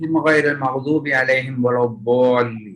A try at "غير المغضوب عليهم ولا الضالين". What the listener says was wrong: Then also غير المغضوب, the ghin is should not be like عين.